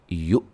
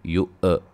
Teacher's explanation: حمزہ کو جھٹکے سے پڑھیں گے، لیکن جھٹکے میں خیال رہے کہ ہلے نہ، قلقلہ نہ ہو حمزہ